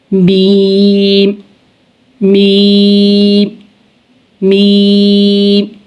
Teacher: मीम दोनों होठों के बैरूनी खुश हिस्सों से